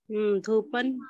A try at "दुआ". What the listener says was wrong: दू नहीं दुआ